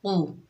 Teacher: جیسے بت، کسبت، قوف کے اوپر پیش بغیر کھینچے پڑیں گے، قوف حروف مستعلیہ میں سے ہے، موٹا ادا ہوگا